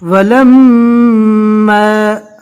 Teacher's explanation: میم کے اوپر تشدید ہے، لہٰذا ایک الف کے برابر گننا کر کے پڑھیں گے